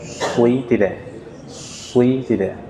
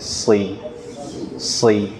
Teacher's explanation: Si tanpa melibatkan bibir ya